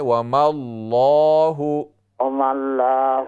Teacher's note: میم کو لام سے ملائیں